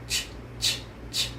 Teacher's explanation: This sound is a quiet sound, which means your voice is off. You should feel no buzzing in your throat. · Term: ch sound